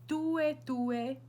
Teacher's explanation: So you want to have like a dental T. Tue kind of sounds Italian if you want to think of it that way.